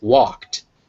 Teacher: Whereas walk, ending in the voiceless k, will be walked with a t at the end.